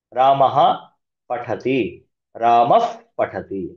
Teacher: ಪ ಮತ್ತೆ ಪ ಮೊದಲು ವಿಸರ್ಗ ಬಂದಿದೆ ಅಫ್ ಅಂತ ಪ್ರೊನೌನ್ಸ್ ಮಾಡ್ತೀವಿ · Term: ಉಪದ್ಮಾನಿಯ, ಉಪಧ್ಮಾನೀಯ